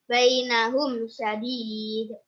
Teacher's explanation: Alasannya karena mim sukun bertemu dengan shin, cara membacanya jelas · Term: Idhar syafawi